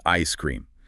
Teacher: In ice cream, the S of ice resyllabifies to join cream, creating the sound ice cream. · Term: resyllabification